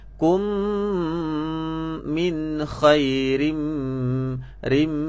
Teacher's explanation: Kum. Okey, dengung ni keluar daripada hidung. Getaran vibrate lah.